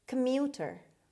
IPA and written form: kəˈmjuːtər (commuter)